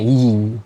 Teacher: kasroh dibacanya i gitu ya. Dibaca i, suara lafaznya i gitu, bukan e.